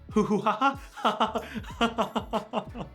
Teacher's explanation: Belgians do not tend to make this harsh G sound. It's a lot closer to an H in their dialect.